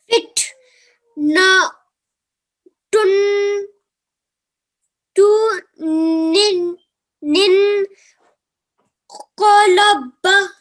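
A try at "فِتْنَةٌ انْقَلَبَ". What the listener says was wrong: Very good. Excellent. So that was perfectly recited.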